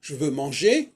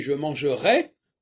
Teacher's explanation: Ou par exemple, je veux manger, ER, on n'entend pas le R. Par contre, si je dis je mangerai, on entend le R.